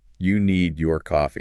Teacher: notice how your voice just went way up when you said your?